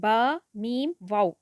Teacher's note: है मीम होठों के खुश्क हिस्से से अदा होती है और वाव की अदायगी में होठ गोल होते हैं और दोनों किनारे मिलते हैं होठों के और बीच का कुछ हिस्सा खुला रहता है